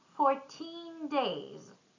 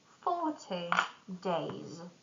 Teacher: teen numbers stress at the end and tens are stressed at the beginning